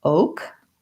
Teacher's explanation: So oak it follows one of our spelling rules, which is that when we have a stressed syllable, the letter O spelled with 2 vowels, like in road or coat, says the sound O. In American O, we glide between O and then we relax into the O. So we want a nice long O, and then we just have our K sound, oak.